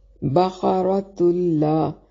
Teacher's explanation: قاف کو موٹی اور را کو بھی موٹی پڑھیں گے